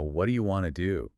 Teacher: And want to smoothly becomes wanna.